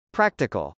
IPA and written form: prˈæktɪkəl (practical)